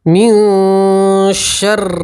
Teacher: یہاں نون ساکن کے بعد شین ہے تو شین اخفا کے 15 حروف میں سے آتا ہے، تو نون ساکن کی آواز کو ناک میں چھپائیں گے اور گنہ کے ساتھ پڑھیں گے تو اسے کہتے ہیں نون ساکن کا اخفا کرنا۔